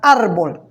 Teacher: palabra árbol ya trae localizada ahí la sílaba tónica es decir aquella sílaba que tiene mayor sonido y entonces se encuentra en la penúltima sílaba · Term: palabra grave